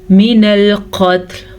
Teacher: وقف کی صورت میں لام بھی ساکن ہو جائے گا، تا تو ہے ہی ساکن، تو کوشش کیجئے گا، اکثر لوگ تا کو متحرک بنا دیتے ہیں۔